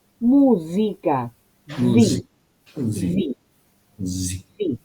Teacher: el italiano tiene un fonema nuevo, propio, único, que nosotros no usamos, que es la S con sonoridad.